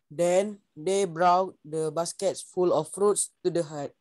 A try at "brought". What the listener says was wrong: Okay, ini mudah saja, tak ada OU ni, anggap je O. Brought. Anggap je O saja.